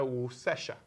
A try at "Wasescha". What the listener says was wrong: Wasescha. It's wa. it's not woo, it's wa.